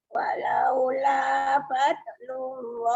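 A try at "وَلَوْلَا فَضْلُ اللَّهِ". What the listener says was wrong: Tebal sikit. Walaula tebalkan.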